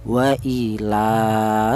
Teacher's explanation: Di sini ada lafaz waila yaitu di mana ini ada huruf lam. Di mana huruf lam ini berharakat berdiri ini dibaca panjang yaitu panjangnya satu alif atau dua harakat atau dua ketukan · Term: mad thobi'i